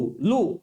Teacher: लू लूचा उच्चार करत असताना जीभ दाताला लागतं. लू आहे का नाही, दाताला लागतं.